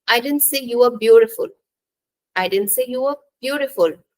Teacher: didn't say you are beautiful I didn't say you were beautiful in the second sentence the stress is on beautiful indicating that the speaker did not say that the person was